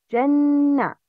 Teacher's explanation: The rules of نون مشدد. Nasal sound with two beats.